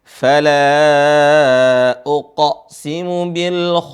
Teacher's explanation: huruf terakhir Sin dialirin suaranya